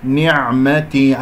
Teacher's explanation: العين عميقة، لا أقول نعمتي قلقلها أو نعمتي لا، نعمتي، أنزل إلى وسط الحلق حتى تخرج عندي العين فصيحة. ورضيت، الضاد هنا مفخمة مرتبة أخيرة لأنها مكسورة خامسة يعني، والراء مفخمة لأنها مفتوحة.